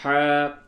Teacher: یہ الف کو تھوڑا کھینچیں گے کیونکہ یہ الف مدہ ہے